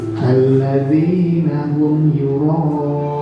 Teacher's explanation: Mim sukun bertemu ya, kita baca jelas. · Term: Idhar syafawi